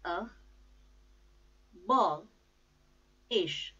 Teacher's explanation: The stress is on second syllable